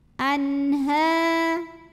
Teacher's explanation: idhar halqi, sebab nun sukun menghadapi huruf halqi yaitu ha, huruf tenggorokan, maka nun dibaca jelas.